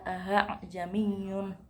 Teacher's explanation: Hamzah kedua dibaca tashil atau dipermudah membacanya dengan menempati makhraj antara alif dan hamzah.